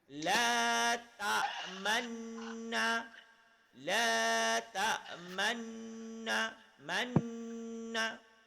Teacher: Dengung tetap dua harakat. Tapi ketika dengung, bibir ke depan. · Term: ishmam